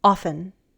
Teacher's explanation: the adverb often is commonly said without the T in American English. Often. The T disappears in other words as well.